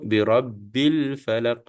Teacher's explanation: Alif ni akan gugur, ba ini terus bersambung dengan lam ya. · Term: alif lam al qamariyah